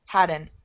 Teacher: Very light T at the end.